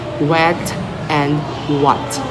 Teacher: lips rounded and back of the tongue raised like W